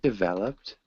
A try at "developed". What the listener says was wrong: T at the end. Developed.